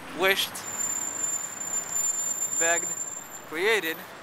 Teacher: we have, at the end of the verb, three different sounds. T for wished, d for begged, and id for created. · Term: past tense marker